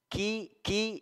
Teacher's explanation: Tipis semua, kemudian ki-nya ki ya, dia memiliki sifat hamas. Jadi ada sedikit mengalir udara ketika pengucapan huruf kaf.